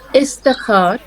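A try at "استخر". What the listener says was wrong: ইস্তাখরের উচ্চারণটা একটু একটু এটা একটু আমাদের জন্য কঠিন, এটা ইস্তাখর, ইস্তাখ, একটু আমাদের এই যে একটা মাঝখানে কিন্তু ইস্তাখর, এই খের উপরে কিন্তু একটা জাজম টাইপের আছে, জজম টাইপের আছে, তাকে ইস্তাখর, ঠিক আছে?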